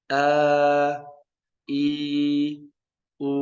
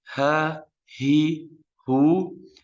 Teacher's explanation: Harful hamzah kita tahan pita suara, kalau harful ha tidak ditahan.